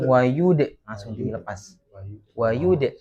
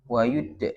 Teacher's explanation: Dalnya ketika dia itu dipantulkan, maka apa? Nekannya itu jangan terlalu lama ya